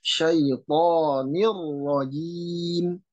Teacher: huruf ro, dia getar dan ada samarnya ya. Menurut Imam Sulaiman Al-Jamzuri, dia takrir ada sifat takrirnya, tetapi ada juga sifat samarnya dalam pengucapan tersebut.